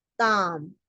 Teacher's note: que significa tiempo, no se pronuncia la S